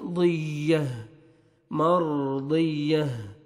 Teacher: जब स्टॉप करेंगे तो ता को हमें चेंज करेंगे, हा का साउंड आना चाहिए, दौद को या के साथ मिलाएंगे, या का साउंड आना चाहिए, दियह, मर्दियह।